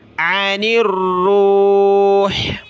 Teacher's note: جب رکیں گے وقف کریں گے تو عن الروح، آخر میں حا کی آواز آئے ، عن الروح، قل الروح، قاف پیش قو، لام را زیر